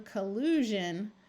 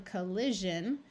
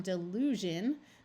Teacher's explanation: collude and you want to turn it into the noun collusion it's going to take on a z sound rather than a sh sound